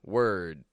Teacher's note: when we say word, first of all, we're using a W, then we're using a schwa R, and then a stop D, word. Now, when I say world, now we are still hearing a W and a schwa R, but then after that, we aren't going straight from the R to the L.